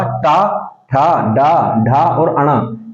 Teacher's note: जीभ का जो आगे वाला हिस्सा है, ये हिस्सा आपके तालु पे दांत से ऊपर की तरफ टच होगा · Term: मूर्धा